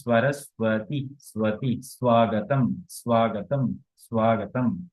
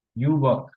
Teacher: ঠিক আছে, ওয়া না, ঠিক অ্যাকচুয়ালি আমি এটাকে মানে বোঝার স্বার্থে আমি ওয়া বলছি, আর ওয়া না, এটা হচ্ছে ব। অর্থাৎ ব না, আবার ওয়াও না, মাঝামাঝি একটা সাউন্ড, ব। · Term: অন্তঃস্থ ব